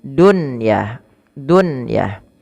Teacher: kata Apabila ada nun mati ketemu ya atau wau satu kata pada satu kata tidak diidgamkan tapi dibaca dengan jelas suara nunnya dan ini dikenal dengan istilah izhar mutlak maka bukan lagi duah